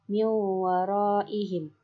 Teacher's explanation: Nun bertemu dengan waw, yang mana nun matinya didengungkan dan dilanjutkan dimasukkan ke dalam huruf waw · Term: idgham bi gunnah